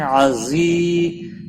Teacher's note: زا کو تھوڑا سختی کے ساتھ پڑھیں گے, یا مدہ بھی ہے, ایک الف کے برابر کھینچ کر پڑھیں گے